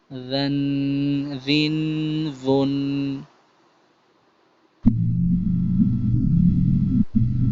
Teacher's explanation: زال کے اندر نرمی والا ساؤنڈ آئے گا، سختی والا نہیں، زا والا نہیں آئے گا، بلکہ زن زن زن. · زبان کی نوک اوپر کے دو دانت جو فرنٹ والے ہیں ان کے کنارے سے لگے گی، نہ کہ ان کی یعنی زبان کی نوک نہ کہ روٹ پہ لگے گی.